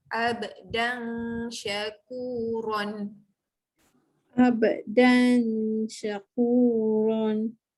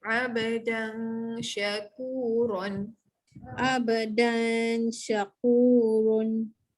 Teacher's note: Huruf shin sama dengan jim. Tengah-tengah lidah naik ke atas.